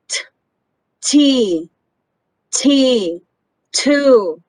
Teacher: okay remember this and sound is voiceless or unvoiced sound because the vocal chords do not vibrate when you make the sound instead we use a puff of air to make the sound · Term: voiceless sound